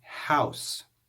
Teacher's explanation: the O and the U form a diphthong, and we hear the sounds of both of those vowels